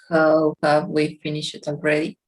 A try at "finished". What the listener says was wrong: Very good. Finished. T at the end, no? Finished.